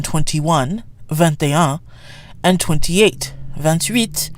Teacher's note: You especially hear the T in 21, 21, and 28, 28, because the T is followed by a vowel, or a vowel sound.